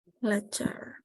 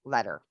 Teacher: So both are sounding correct, and you can say the t or the duh.